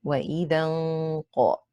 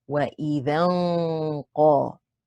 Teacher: That's where the heaviness of the ghunna comes when we say وَإِذًا qa. Because the ghunna needs to be heavy because the qaf is a heavy letter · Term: ikhfa haqiqi